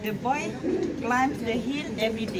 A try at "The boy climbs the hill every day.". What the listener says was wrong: The boy? Ah, the S. Bunyilah S tu. Ah, the boy climbs the hill every day. Ah, jangan takut nak bunyikan S itu ya.